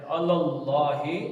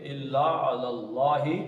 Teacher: اللہ, لام کتنے ہیں اس میں, اللہ میں دو ہے, الف لام لام الف, تو اللہ, اللہ, اللہ, لام اللہ کا لام موٹا پڑیں گے, پیچھے زبر ہے, اللہ, ہاں سینے سے نکالیں گے, اللہ اللہ.